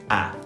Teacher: So the jaw opens again, but what do the lips do? A. They kind of stretch outwards. We call them spread. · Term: Vowel 2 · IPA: /æ/